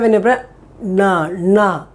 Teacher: where this letter these letters to be pronounced first the tongue you take the tip of the tongue take it to the center the roof of the mouth on top the palate